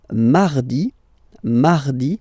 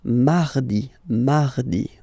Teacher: you can hear that you don't pronounce it that strongly, this R.